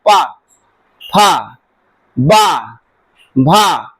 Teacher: जब ऊंठ पर ऊंठ टच करता है आपस में तो वहां पर ओष्ठ वर्ग का वर्ण होता है।